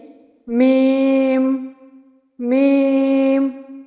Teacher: मीम होठों के खुकी वाले हिस्से से अदा होता है। यानी मीम मीम तो ये खुश हिस्सा होठों का जब मिलता है तब मीम अदा होता है।